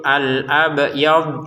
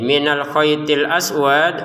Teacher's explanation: Huruf dod tidak dipantulin, huruf dal dipantulin dengan syarat berhenti ya. Khaitil aswad dalnya dipantulkan.